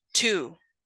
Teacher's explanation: The phoneme T is voiceless, alveolar stop, such as in to.